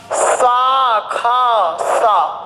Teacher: तथा ऊष्म ध्वनि हा को छोड़कर अब सा खा सा तीन ध्वनियां कैसी हैं? अघोष हैं, कंपन विहीन हैं।